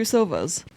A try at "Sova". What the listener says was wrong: That sounds like you're saying sofa.